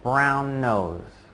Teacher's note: You just kind of let that N sound at the end of brown hang there for a short moment.